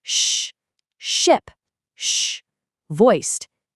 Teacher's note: the flat blade of your tongue pushes up against the hard roof of your mouth. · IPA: /ʃ/